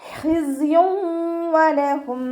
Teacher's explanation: സായ് ഉച്ചരിക്കുമ്പോൾ ഒരു തേനീച്ചയുടെ മൂളൽ പോലെയുള്ള സൗണ്ട് കൊടുക്കാൻ ശ്രദ്ധിക്കുക കേട്ടോ.